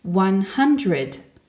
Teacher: Pense bien à accentuer la première syllabe de 100. Entraîne-toi aussi à produire une aspiration pour prononcer le H au début du mot 100.